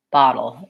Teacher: bottle has my not hot vowel, my open back vowel